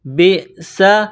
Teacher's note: بئس، با کو حمزہ کے ساتھ ملانا ہے، حمزہ ساکن ہے۔ با کو جب حمزہ کے ساتھ ملائیں گے تو جھٹکا دیں گے، با حمزہ زیر ب، سین زبر سا، سین میں سیٹی کی آواز پیدا کریں گے، سین کو باریک کریں گے۔